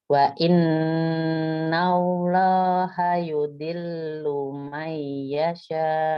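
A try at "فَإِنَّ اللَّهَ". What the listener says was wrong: Depannya bukan wa tapi sayangnya.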